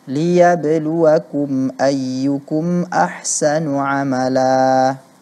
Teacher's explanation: Mad iwad di sini dibaca terlalu panjang shiogianya hanya dua harakat saja